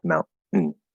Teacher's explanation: The most, I don't know if it's common necessarily, but the most common one that I tend to talk about and that comes to mind would be like in mountain. So we're using a glottal stop T, and then we're not saying tain or tin or something like that. We just say the N, mountain. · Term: Syllabic consonants